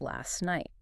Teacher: But naturally, the T drops. And it becomes last night.